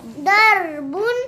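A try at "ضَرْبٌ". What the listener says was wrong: बहुत मोटा पढ़ना दौर बुन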